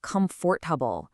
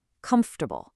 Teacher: We completely swallow the O and the R in the middle. We do not say comfortable.